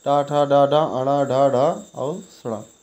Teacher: मूर्धन्य तालु के मूर्धा भाग से